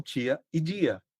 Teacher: o processo de palatalização dos fonemas dentais, que é falar o T e o D como ti e di